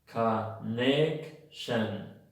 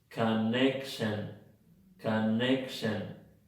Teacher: Hay dos schwas en la palabra connection.